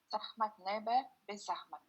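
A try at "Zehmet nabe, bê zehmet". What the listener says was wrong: Très bien, très bien.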